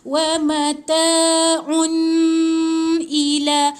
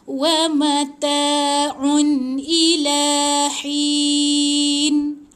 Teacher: Bila tanwin sebenar yang ditulis dalam resam Usmani Al-Quran ni, jadi baca jelas, touch and go, tak ada dengung, jangan tahan. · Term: tanwin yang sebenar